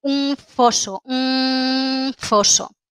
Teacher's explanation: no decimos un foso sino que usamos una labiodental